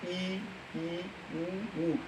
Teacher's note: तो समवृत्त में होता है यानी जो बंद हो, तो आप अपने मुंह से ही बोल सकते हैं ई ई ऊ ऊ। इनमें हमारे मुख जो द्वार है बिल्कुल पूर्ण रूप से बंद रहता है, इसलिए हम ई ऊ को हम समवृत्त स्वर पाते हैं।